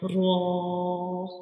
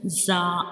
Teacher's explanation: ra is a bold letter. We read it with heavy sounds like raw. When we pronounce raw, the sound fills into the mouth like raw.